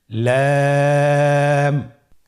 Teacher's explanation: লাম হরফটি উচ্চারণের ক্ষেত্রে অবশ্যই বারিক হবে এবং তিন আলিফ টেনে পড়তে হবে